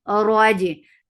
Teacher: give takrar in ra for fatha upon jaws, the ra will be heavy